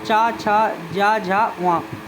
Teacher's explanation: च वर्ग के जितने भी वर्ण है च छ ज व ये तालू से बोले जाते हैं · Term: तालव्य वर्ग